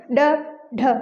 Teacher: ड और ढ, ड ढ, जैसे हम ड ढ बोलेंगे तो ये जीभ हमारी झटके के साथ एक बार ऊपर जाएगी और एक बार नीचे आएगी